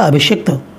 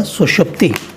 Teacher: तो अभिधन सेक में भी भ पर छोटी ई की मात्रा है, ए आ से भिन्न है इसलिए, और बाद में जो दंत स है वह मूर्धन्य श में परिवर्तित हो गया, इसलिए अभिधन सेक जो है अभिषेक हो गया।